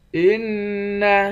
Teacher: نون مشدد پر غنہ کریں گے